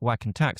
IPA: wæk and tæk